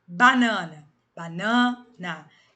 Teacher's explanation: a sílaba tônica é o na. Aqui é átona, terminou com A.